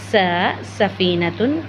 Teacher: बच्चों, हमने ज़, स और सौ इन तीनों का मखरज एक ही पढ़ा था, यानी ज़ुबान की नोक को ऊपरी और निचले दांतों के किनारों से लगाएंगे तो ज़, स, सौ होंगे। और बच्चों, ये तीनों सख्ती के साथ पढ़े जाएंगे, यानी इनमें सीटी की आवाज़ मौजूद है।